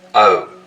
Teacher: the vowel sound in boat, most, hope starts with the tongue further forwards in the mouth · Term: goat fronting